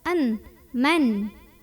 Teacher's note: Faminhum man, ada idhar halqi karena ada nun sukun yang ketemu sama huruf hamzah. Maka cara membunyikan nun sukunnya ini adalah dibunyikan dengan jelas, an, man, dan tidak perlu ditahan.